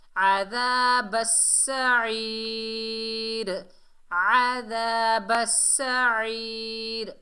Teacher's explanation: عین کو حلق کے درمیان سے ادا کرنا ہے۔